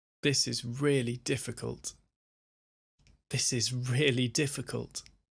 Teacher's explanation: So when you put it together, you want to stress that it's really and difficult. So the stress is on the ri and the di.